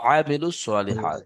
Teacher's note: আইনটা গলার অনেক মাঝখান থেকে আওয়াজটা আছে